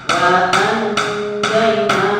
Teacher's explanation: Diperhatikan, tadi saya ingatkan evaluasi jilid 4-nya, ketika nun sukun bertemu dengan fa, nun sukun bertemu dengan qaf, ataupun nun sukun yang bertemu dengan huruf ikhfa harus dibaca dua ketukan